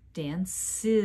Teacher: can add a vowel in between the two s sounds Danes because the vowel I is voiced the ending s now is also voiced